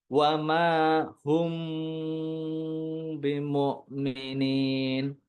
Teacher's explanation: harus ada dengungannya ditahan dulu sebentar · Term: Ikhfa Syafawi